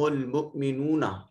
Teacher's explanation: مؤمنون میں حمزہ کو جھٹکے سے ادا کریں گے